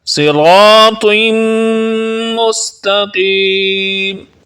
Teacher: صاد کو پر یعنی موٹا پڑھیں گے اور را کو بھی بھاری آواز میں پڑھیں گے